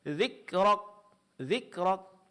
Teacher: Maka di sini huruf kaf hilang sifat hamasnya. Yang tampak hanya sifat syiddah, suara tertahan · Terlalu berlebihan di dalam mempraktikkan sifat syiddah, yaitu pengucapan huruf yang disertai suara yang tertahan, sehingga menghilangkan sifat hamas.